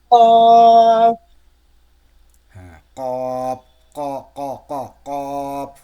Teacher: জিহ্বার গোড়া তার বরাবর উপরে তালুর সঙ্গে লাগিয়ে উচ্চারিত হয়।